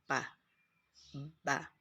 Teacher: اسی طرح با جو ہے یہ ہونٹوں کے اندرونی حصے کو ملانے سے ادا ہوتا ہے، یعنی ہونٹ کے جو اندر والے حصے ہیں یہ دونوں جب آپس میں ملتے ہیں تو اس سے با ادا ہوتا ہے، با۔ اور یہ جو گیلا والا حصہ ہے یعنی طری حصہ جو ہے، گیلا والا حصہ، اسی سے ادا ہوتا ہے ب۔